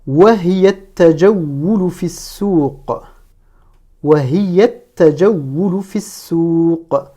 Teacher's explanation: Donc, en cas de liaison, je ne prononce pas le alif lam. Donc, je passe du ya qui est présent dans hiya, du ya final, directement, je passe au ta avec la shadda.